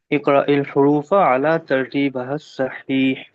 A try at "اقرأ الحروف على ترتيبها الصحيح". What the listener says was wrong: ہاں، یہ جو ترتیب با ہو جا رہا ہے اس کو ترتیب بی کر دیجئے، ترتیب بها الصحیح۔